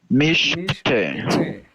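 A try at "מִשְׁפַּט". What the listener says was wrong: Nice, awesome.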